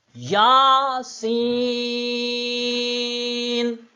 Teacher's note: یا کی آواز ایک الف، سین کی 5 الف